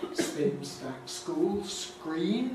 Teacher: they're unaspirated when preceded by S